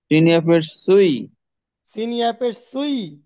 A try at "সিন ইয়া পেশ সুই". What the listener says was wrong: সিন ইয়া পেশ সুই। এগুলো এই উচ্চারণগুলো খেয়াল করতে হবে। এই উচ্চারণগুলো এই যে শুরুতে পড়ে আসছেন, কত সহজ সহজ পড়া, কিন্তু উচ্চারণ তো শুদ্ধ হচ্ছে না। ও এর উচ্চারণ হচ্ছে না, ইয়ার উচ্চারণ হচ্ছে না, ইয়ায় যখন তাসদিদ হয় তখন উচ্চারণ হচ্ছে না।